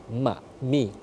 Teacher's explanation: mim itu ya tempat hurufnya itu ya disentuhkan Antara dua bibir Ma mi ketika disukun Hum maka tertutup n izhar syafawi jelasnya